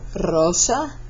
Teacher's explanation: rosa would be trilled even though it's at the beginning of the word